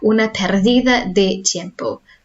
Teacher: in Spain, a D between vowels, or vowels either side, is soft sound. Think about double D in Welsh.